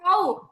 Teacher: দুই ঠোঁট গোল করে মাঝে সামান্য ফাঁক রেখে ওয়াও।